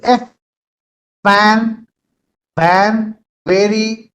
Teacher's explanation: Labiodental, I've already spoken before also. The lower lip and the upper teeth combination. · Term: labiodental sounds